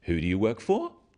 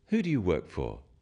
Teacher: when you ask people questions about themselves in English use a falling tone it sounds friendlier